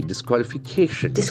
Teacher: The accent falls on the second last syllable, that K.